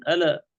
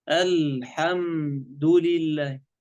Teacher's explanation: إنما اللام ساكنة، ما في قلقل